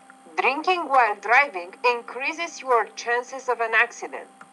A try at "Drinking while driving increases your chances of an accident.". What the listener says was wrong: Okay, I'm going to say no on that one. You want to emphasize the word increases because increases is the opposite of decreases.